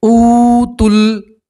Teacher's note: اوتل، اور یہ واو مدہ ہے۔ واو مدہ میں بھی ایک الف کے برابر کھینچ کر پڑھنا ہوتا ہے